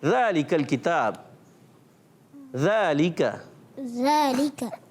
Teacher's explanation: ज़बान का सिरा और ऊपर के दांतों के अंदरूनी किनारों से।